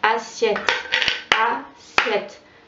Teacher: je ne prononce pas les E, qu'on dit E muet, à la fin des mots